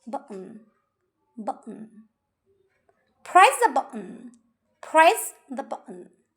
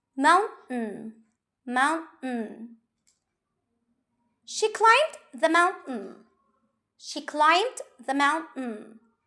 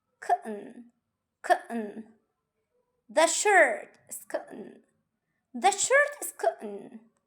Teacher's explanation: instead of pronouncing a clear T sound, you cut the airflow suddenly. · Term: glottal T sound